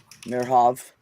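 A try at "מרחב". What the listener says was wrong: Merhav. You got to put the ch in there.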